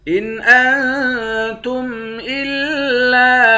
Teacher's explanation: حمزے کو نون کے ساتھ ملا کر نون پر اخفا کریں گے